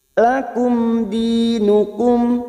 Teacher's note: mim sukun bertemu Dal Idhar syafawi dibaca jelas